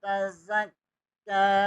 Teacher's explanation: ज़ा ज़बर को काफ के साथ मिलाएंगे, काफ को बरीक पढ़ेंगे। काफ के ऊपर खड़ी ज़बर है, इसे एक लफ़ के बराबर खींच कर पढ़ेंगे।